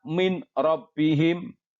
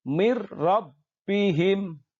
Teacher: Yang betul adalah mir rabbihim. Dimasukkan nun matinya ke huruf depannya dengan tanpa mendengung. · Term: idgham bila gunnah